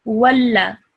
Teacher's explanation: Because of the shadda, you have to join the waw with the lam with force. And then because of the fatha, you only say it for 1 second.